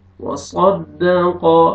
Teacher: صاد کو موٹا کر کے پڑھیں گے، قاف کو بھی موٹا کر کے پڑھیں گے. وصدق صاد تاکہ سین میں آواز مکس نہ ہو.